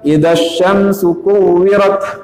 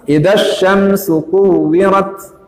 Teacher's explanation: ada semacam desis seperti rem angin pada bus